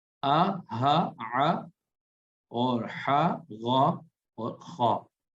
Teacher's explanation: یہ حلق سے ادا ہوتے ہیں 6 حرف